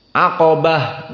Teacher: maka qo kita baca dalam keadaan tafkhim aqabah dan ba dalam keadaan muraqaqoh dan Ta murqqoh